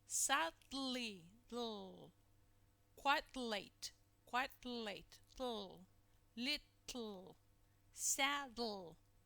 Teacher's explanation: we simply lower the sides of the tongue to release the compressed air that rather than raising and lowering the blade of the tongue · you see that the air escapes through the sides because you're preparing your organs to pronounce the lateral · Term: lateral release